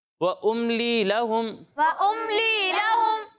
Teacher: وَأُمْلِي لَهُمْ إِنَّ كَيْدِي مَتِينٌ ٹھیک ہے، اچھا پڑھا، لیکن آپ نے وَأُمْلِي لَهُم میں تھوڑا سا غنہ کیا، ٹھیک ہے، تو آپ نے ایسا نہیں کرنا۔ میم ساکن کے بعد لام آ رہا ہے، یہاں اظہار شفوی ہے، یہاں غنہ نہیں کریں گے۔